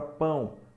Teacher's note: na palavra pão Apesar de eu ter a letra o o som é de U semivocal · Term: U semivocálico